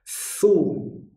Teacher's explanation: monyongnya mulut ke depan itu adalah harokatnya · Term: harokat dhammah